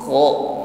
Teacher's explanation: Itta kho, ya, ada dengkur, ya, ada bunyi dengkur, ada gesekan di tenggorokan dengan akar lidah sehingga bunyinya ada kho, ya. Dan sifat yang menyertai huruf kho ini isti'la, bunyinya tebalkan.